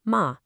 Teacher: And a sharp fall, ma, means to scold